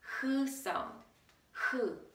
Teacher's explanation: So, 흐, you need much more air. So it comes from this, your throat.